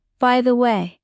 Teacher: Emphasize way. That's where the melody rises. · Feel the upward tone, friendly and open.